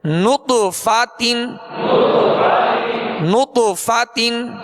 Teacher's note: طا پر قلقلہ کریں گے اور طا کو پر پڑھیں گے، نطف، تا دو زیر تین، نطفتن نطفتن۔ جب نط کہیں گے تو ہونٹوں کو گول کریں گے کیونکہ نون پر پیش ہے، فا کی زبر پڑھتے ہوئے آواز اور منہ کھولیں گے، تا کی دو زیر پڑھتے ہوئے آواز کو گرائیں گے، نطفتن نطفتن۔